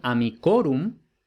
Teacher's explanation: en amicorum no tiene el acento en la I